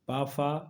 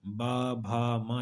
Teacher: पा फा अघोष है बा भा मा यह सब क्या है सघोष है